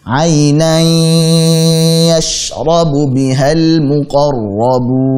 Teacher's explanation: Gunnah yang keluar dari al-khishum. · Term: idgham bi gunnah